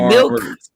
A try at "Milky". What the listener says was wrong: Milky. I'm just seeing there's a Y on it. Yeah.